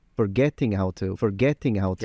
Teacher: listen to that really frontal T in the forgetting again